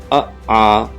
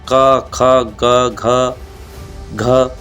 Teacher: कंठ का मतलब है कंठ से ही आवाज़ आए और कहीं भी टच ना करे